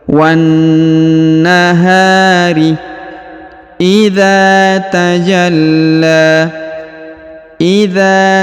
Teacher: huruf dza dipanjangkan dua harakat karena di depannya terdapat Alif